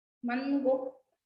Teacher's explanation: Esa na es nasal, no suena igual que la de niño o que la de naranja.